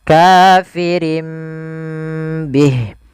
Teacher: Iqlab itu mengganti suara nun menjadi suara mim.